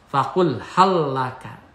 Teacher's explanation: Cara membacanya huruf lam pertama diidghamkan masuk kepada huruf lam yang kedua. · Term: idgham mutamasilan